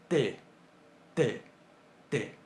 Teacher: Un sonido velarizado es un sonido en el cual, además del punto de articulación que hacemos en la boca, constringimos un poquito la garganta, más o menos a la altura del velo del paladar, que es la parte blanda, lo que está detrás del paladar duro. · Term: velarizados